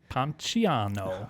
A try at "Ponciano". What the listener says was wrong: the ch. Ponciano. You did the ch.